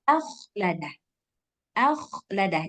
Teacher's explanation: Jadi ada angin yang keluar ketika kita mengucapkan huruf kha. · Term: hams